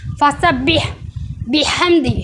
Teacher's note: अब ये फसबीह में बड़ा ह आ रहा है। सांस के साथ इसको हलक से निकालेंगे। हलक के दरमियानी हिस्से से अदा करेंगे। जहां से ऐन अदा होता है।